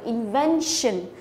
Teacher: có đuôi tion thì thường là trọng âm chính của từ sẽ rơi vào âm tiết ngay trước đó, tức là rơi vào cái ven này